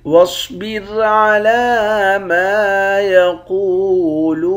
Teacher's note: صاد کو موٹا پڑھیں گے، لام پر کھڑا زبر ہے، کھڑا زبر کو 1 الف کے مقدار کھینچ کر پڑھتے ہیں · میم کے بعد الف ہے، الف حرف مدہ ہے، 1 الف کے مقدار کھینچیں گے۔ قاف کو موٹا پڑھیں گے، واو کے ساتھ ملا کر 1 الف کے مقدار کھینچیں گے۔ لام کو بھی واو کے ساتھ ملا کر 1 الف کے مقدار کھینچ کر پڑھیں گے۔